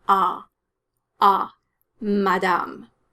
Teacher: the french a sound is in between the ah of dad and the ah of father